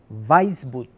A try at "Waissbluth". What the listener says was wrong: Más o menos. Te comiste la L, Weissblut, pero todo el mundo se la come, así que no hay problema.